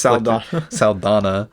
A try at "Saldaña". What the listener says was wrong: I was about to, you're adding another syllable.